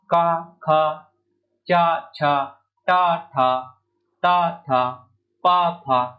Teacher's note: वहीं जो अघोष जो है व्यंजन है जैसे क ख च ट थ ता थ प फ तो इन सब को बोलने में जो है हमारे स्वर तंत्रियों में कंपन उत्पन्न नहीं हो रहा है